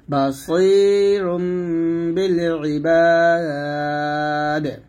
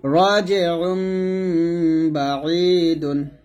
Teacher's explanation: নুন সাকিনের পর যখন ইকলাবের হরফ আসে তখন মিম দ্বারা বদল করে গুন্নাহ করতে হয় · যেমন এখানে দেখুন বা জবর বা, সদ ইয়াজের সি বা সি, র দুই পেশ রুন আছে, তো আমরা এখানে রুন না বলে রুম বলবো। অর্থাৎ র দুই পেশ রুনের মধ্যে একটা নুন সাকিন গোপন আছে, যেমন র নুন পেশ রুন, এরকম আর কি। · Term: ইকলাব গুন্নাহ